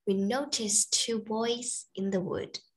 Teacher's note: the t sound in the noticed is disappeared